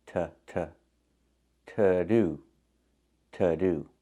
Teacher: the to is pronounced with a short uh sound like cup and up